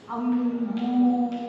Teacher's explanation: అంటే మనం పలికే సౌండ్ ముక్కు ద్వారా గాలి రూపంలో వస్తుంది అనమాట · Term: అనుస్వర్